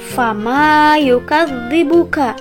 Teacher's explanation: yaitu Alif sukun sebelumnya berharokat fathah maka cara membacanya harus dipanjangkan sebanyak dua harokat